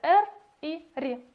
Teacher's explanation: Дрожащие – это те звуки, при образовании которых органы речи вибрируют, то есть органы речи производят дрожание.